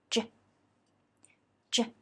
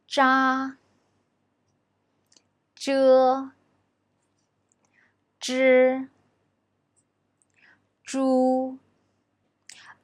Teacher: When we pronounce it, the tip of the tongue is curled up against the hard palate, gently touches it, then opens a gap to let the air flow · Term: curled tongue initials